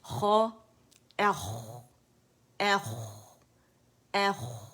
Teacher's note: اس میں موٹا پن بھی ہے رخاوا بھی ہے